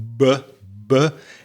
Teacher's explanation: if you put your hand on your throat or on the top of your head, you can feel some vibration because the voice box in your throat is activating. So, BBB is a voiced consonant.